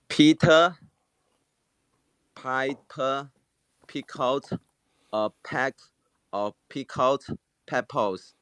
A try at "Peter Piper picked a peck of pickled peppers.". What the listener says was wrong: Okay, so the third word is pronounced picked. Picked. Peter Piper picked a peck of pickled peppers. Picked.